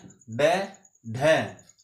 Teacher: उत्क्षक्षिप्त इनको इसलिए कहते हैं क्योंकि इनके उच्चारण में हमारी जीवा एक झटके के साथ ऊपर जाती है और फिर नीचे गिरती है उसी झटके के साथ। इसीलिए झटके से उच्चारण के कारण इन्हें हम उत्क्षक्षिप्त व्यंजन कहते हैं।